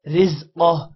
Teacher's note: را یہاں پر موٹا نہیں کرنا کیونکہ را کے نیچے زیر ہے اور قاف موٹا ہوگا وقف آ رہا ہے جس کی وجہ